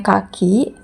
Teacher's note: tempat artikulasinya velar dan suaranya tak bersuara